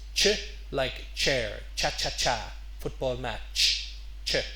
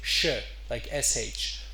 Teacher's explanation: Arabic speakers sometimes take the CH sound at the beginning of words and they say sh